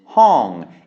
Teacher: It's a falling tone because we have mai to with a high-class consonant. So that automatically makes it a falling tone.